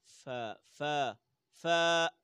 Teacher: فا کا مخرج ہے جب دانتوں کا کنارہ ہونٹوں کی اس تری پہ لگے، فا فا فا، طبیعتی طور پر، فطری طور پر، یہ بھی نہ ہو کہ زیادہ ہم زور دیں کاف، بالکل نہیں، کاف اصل مخرج، کاف کاف۔